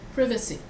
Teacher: so long vowel short short long short short privacy okay but in england they stress the second syllable so it's therefore you stress and not the not the first